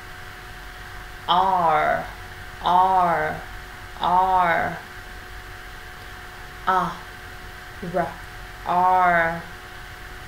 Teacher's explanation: Âm error ngay sau một nguyên âm nào đó thì mình đọc kết hợp cả nguyên âm và cong lưỡi của mình lên. Môi chu, má hóp, âm thanh đẩy sâu phía bên trong cổ họng.